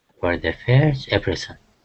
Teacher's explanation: maybe you should emphasize Fierce rather than April or sun because that's the the description